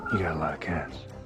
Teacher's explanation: Notice that the letter T in got is pronounced as a flap T and connects to the article a, which is pronounced as a schwa sound, So we hear gotta.